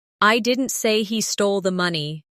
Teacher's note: In the first one, the stress is on I, meaning maybe someone else said it. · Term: emphasis